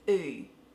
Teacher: In an Australian dialect, a broader Australian dialect, on the oo sound, your lips will stay a little bit square, oo, and your tongue does the work.